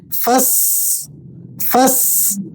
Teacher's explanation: فا کو سین سے ملایا تو ایک مرتبہ سین پڑھا گیا، پھر سا، سین پر کھڑا زبر ہے تو اس حرکت کے ساتھ جوڑ کر آپ نے سین کو پڑھنا ہے، فسا فسا۔ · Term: تشدید